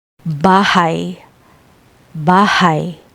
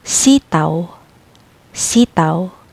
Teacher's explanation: These are cases where two vowels flow together as a single sound, and they're mainly used with the letters W and Y. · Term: special vowel sounds